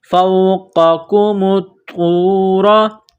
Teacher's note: قاف کو موٹا کرنا ہے، اس کاف کو باریک پڑھیں گے۔ میم کو طوا کے ساتھ ملانا ہے، طوا میں سختی کرنی ہے، طوا کو دبانا ہے۔